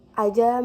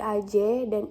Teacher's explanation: Penghilangan bunyi ini biasanya terjadi pada bagian akhir yang ditandai dengan perubahan fonem A menjadi e pepet.